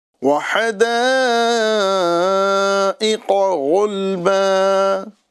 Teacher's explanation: یہ بھی پر ہے۔ اور کمال کی بات یہ ہے کہ قوف جو ہے یہ زبان کی جڑ اور نرم تالو سے ادا ہوتا ہے ، اور جو غین ہے یہ تھوڑا سا اوپر آپ جائیں · تھوڑا سا اوپر آپ جائیں گے ہے نا حلق کی جانب، تو اوپر والی حلق سے غین ادا ہو رہا ہے